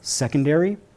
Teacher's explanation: we would pronounce the word secondary with stress on the first syllable. Secondary. Due also to some British influence, there's a vowel at the end that's dropped and its more like second'ry.